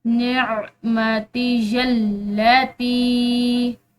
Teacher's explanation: نعمتی اللاتی، اسی طرح یہاں بھی تا کے بعد جو ہے یا ساکن ہے اور اس کے بعد اوپر یہ چھوٹی مد ہے، تو اس تا کو بھی ہم نے لمبا پڑھنا ہے، اور یہ لام مشدد ہے جو کہ پچھلے حرف یا سے مل رہا ہے